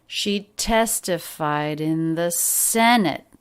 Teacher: just a light d sound at the end which then links into the next word